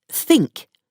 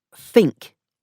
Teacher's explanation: Th becomes f, and th becomes v.